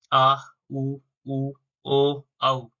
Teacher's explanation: जिन स्वरों के उच्चारण में जीभ का पिछला भाग क्रियाशील रहता है उसे पश्च स्वर कहते हैं, जैसे आ, उ, ओ, औ।